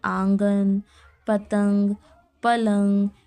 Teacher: نون غنہ میں کیا ہے، اس کی آواز ناک سے نکلتی ہے